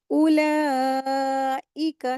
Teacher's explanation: उलाइका, 4 हरकत इसको खींचेंगे।